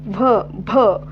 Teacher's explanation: भ महाप्राण आहे ओष्ठ आहे